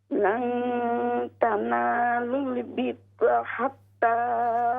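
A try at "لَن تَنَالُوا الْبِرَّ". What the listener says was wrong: बिर्रा, रा को मोटा करें, रा पर जबर है। लन तनालुल बिर्रा,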